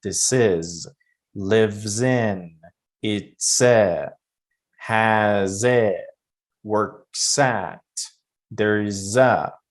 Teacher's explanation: the Z sounds usually links to the next word. You connect them to the next word and you pronounce as if it's one word.